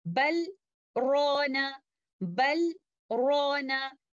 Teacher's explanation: And since there is a sakt here, the letter lam does not join with letter ra. And because they do not join, there is no question of idgham. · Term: breathless pause